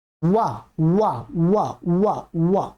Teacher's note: उत्तर भारत के लोग इसका उच्चारण गलत करते हैं, वो ब करते हैं, वो ओठों से ही बोल देते हैं। इसका है वा वा वा, जिह्वा दांतों में टच होगी, वाह वाह वाह वाह वाह वाह। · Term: दंतोष्ठ